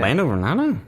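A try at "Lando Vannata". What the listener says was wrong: Did you say Vernata? There's no R, man.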